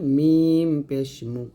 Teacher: মিম দুই ঠোট মিল করে মিম পেশ মু